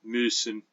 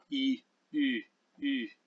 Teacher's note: make the E sound, a high front vowel, and then pucker up really tight like you've eaten something sour, and say E, and then you have it. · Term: high front rounded vowel